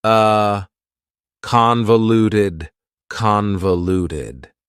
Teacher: That second syllable again has that schwa sound, that reduced vowel sound.